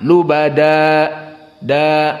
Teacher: lubada di sini tanwin asalnya lubadan, namun di saat diwaqafkan tanwinnya berubah menjadi mad, jadi lubada. Di sini dinamakan dengan mad iwad dan dia harokatan lubada da.